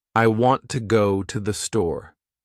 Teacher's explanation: The words want, go, and store are strong. The others are weak. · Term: sentence stress